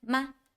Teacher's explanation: It's a silent tone. Silent tone pronounced as ma is a light version of the first tone.